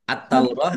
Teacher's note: taknya ada tasdidnya taknya dibaca double